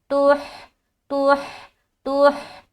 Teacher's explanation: हा को सीने की तरफ से निकालना है